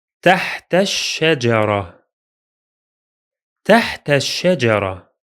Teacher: The alif is silent because it's in connected speech, and the lam is silent because it is solar. We can make sure of that from the shadda on the letter sheen.